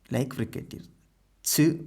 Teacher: So there is a stoppage of air, then after the stoppage the air is released slowly, then there is a narrow gap like fricatives, ch. When you say ch, first there is a closure like plosive sounds, then you release the air slowly like fricative. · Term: affricates